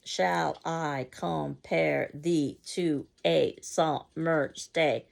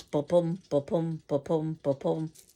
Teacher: That's by no coincidence 10 syllables of stressed and unstressed, which sounds ba-bum, ba-bum, ba-bum, ba-bum, like a heartbeat, which many have argued is the first sound we all hear in our mother's womb, which is why Shakespeare's language can be so attractive to the ear. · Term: iambic pentameter